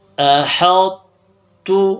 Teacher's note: حمزہ زبر آ حا طا تا زبر حت تا پیش تو احط، اصل میں تھا احطت، تو طا کا استعلا باقی رکھ کے پیش کو ادا کرنا ہے